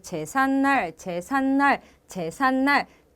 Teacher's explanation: 뒷말에 첫 소리가 니은 미음 앞에서 니은 소리가 나고 있죠